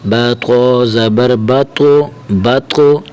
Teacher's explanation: با تو زبر با، تو با کی حرکت کو تو کے ساتھ ملائیں گے، تو کو کلکلا کے ساتھ پڑھیں گے، تھوڑا سا ہلائیں گے، اور تیسری بات تو کو موٹا کر کے پڑھیں گے